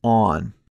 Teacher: another vowel the vowel sound aw as in the word on this sound is pronounced with the tongue pulled back and placed very low in your mouth